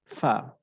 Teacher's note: এটা আমার সামনের উপরের দাঁত নিচের ঠোঁটের সাথে মিলবে একদম নরমাল সামনের উপর দুইটা দাঁত আমি নিচের ঠোঁটের উপর নিয়ে আসবো